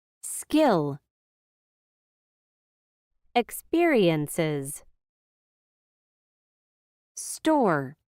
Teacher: When an s sound comes before the p, t, or k sound, we do not aspirate the sound.